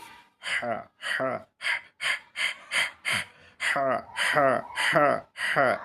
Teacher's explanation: আমি আবারও বলতেছি, গলা শক্ত করে আওয়াজকে চাপ দিয়ে আমরা উচ্চারণ করব 2টা হরফ। এই 2টা হরফ হলো গলার মাঝখান থেকে